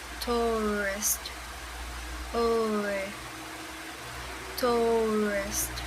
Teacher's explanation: our lips need to be round from the start. Then we need to turn them into a more tense position, making a tighter circle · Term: diphthong